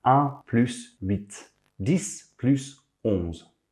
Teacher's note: we never make liaisons with the numbers huit (8) or onze (11)